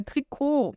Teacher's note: Vem aí do francês e por isso eu não falo esse T no final.